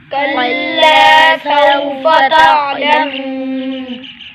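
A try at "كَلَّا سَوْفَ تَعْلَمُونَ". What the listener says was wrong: کلا، یہ کاف باریک ہے، آپ موٹا پڑھ رہے ہیں، اس کاف کو کیا کرنا ہے؟ باریک کر کے پڑھنا ہے۔ الف پر لام پر الف مدہ ہوگا، ایک الف کھینچیں گے۔ سو، واو ساکن سے پہلے زبر ہے، یہ واو لینا ہے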